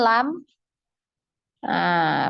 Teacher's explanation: makhraj dari huruf lam adalah di ujung dua tepi lidah sampai akhir ujung lidah bertemu dengan gusi